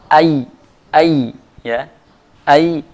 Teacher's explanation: Ya adalah makhrajnya tengah lidah dengan langit-langit atas.